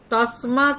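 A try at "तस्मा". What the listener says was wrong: না, দটা বলবেন না, ঠিক আছে? তসমা আকার পর্যন্ত।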